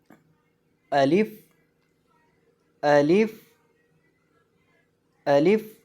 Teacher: الف کو منہ کے خالی حصے سے ادا کرتے ہیں